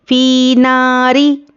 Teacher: फ़ा या ज़ेर फ़ी या मद्दा है, एक अलिफ के बराबर खींच कर पढ़ेंगे। फ़ी नारी, नून अलिफ ज़बर ना, अलिफ मद्दा है, एक अलिफ के बराबर खींचना है।